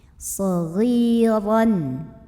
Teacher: ra-nya ini dibunyikan secara tafkhim karena ra-nya berbaris di atas tanwin fathah. Maka bacanya tebal, pangkal lidah dinaikkan.